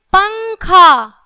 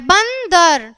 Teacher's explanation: बिंदु अंक का उच्चारण नाक से होता है।